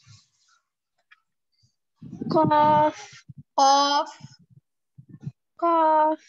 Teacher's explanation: कौफ में बिल्कुल जबान के डिपेस्ट पार्ट जो है ऊपर के तालू से अटैच्ड हो रहा है, तब जाके कौफ अदा हो रहा है